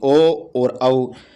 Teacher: ओ और औ कंठ और होठ से बोले जाते हैं